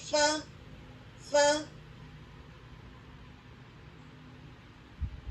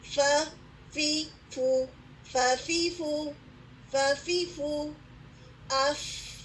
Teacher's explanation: فا جو ہے اس میں کیا ہوتا ہے کہ اوپر کے دو دانتوں کا سرا نیچے کے ہونٹ کی گیلی جگہ پر لگتا ہے, ٹھیک ہے. آپ کر کے دیکھیں, اوپر کے جو آپ کے دو دانت ہیں, فرنٹ ٹو ٹیتھ ہیں, ان کو ثنایت الاولیٰ بھی کہا جاتا ہے, وہ آپ کے ہونٹوں کے گیلے حصے پر ٹچ کرتے ہیں.